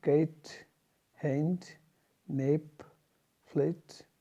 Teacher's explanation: ए और ई दोनों मिलते हुए